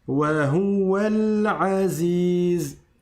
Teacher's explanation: C'est pas wahuwa, je fais pas de shadda sur le waw.